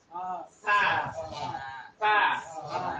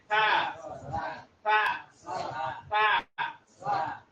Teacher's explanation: এই সাটা উচ্চারণ হবে জিহ্বাটা বাইর করে দিয়ে জিহ্বার আগালটা উপরে দাঁত লাগিয়ে দেয়া।